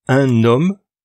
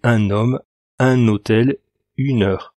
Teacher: Avec un H muet, on va faire la liaison un homme, pas un homme, mais un homme, un hôtel, une heure.